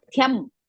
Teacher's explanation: So thyam it is mahaprana hrasva